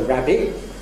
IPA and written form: ˈræbɪʔ (rabbit)